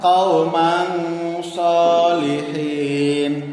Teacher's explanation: Tanwin bertemu dengan huruf so. Cara membacanya harus dengan samar. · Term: bacaan ikhfa